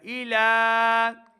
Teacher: ایلا، لام کے اوپر کھڑا زبر ہے، اس کو 2 حرکات لمبا کر کے پڑھنا ہے